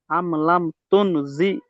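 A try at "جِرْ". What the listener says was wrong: জি নয়, জির পরে একটা র আছে না? জাল রজের জির। আম লাম তুন জির।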